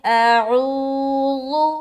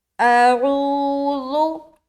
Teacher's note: اعوذ، حمزہ اور عین دونوں حرف الگ الگ ہے۔ سب سے پہلے حمزہ کو نکال کر اپنی آواز کو حلق میں لے جانا ہے اور حلق سے عین کو نکالنا ہے۔ بعض اوقات لوگ جب اس لفظ کو پڑھتے ہیں تو الف اور عین دونوں میں کوئی فرق سمجھ نہیں آتا، وہ پڑھتے اعوذ تو دونوں ایک ہی طرح سنائی دیتا ہے۔